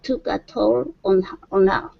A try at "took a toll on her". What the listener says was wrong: Yeah, so let's drop that H. We're going to say took a toll on her.